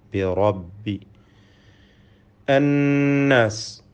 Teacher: ശദ് നൽകപ്പെട്ട നൂനിനെ മണിച്ചുകൊണ്ട് ഉച്ചരിക്കണം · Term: നൂൻ മുശദ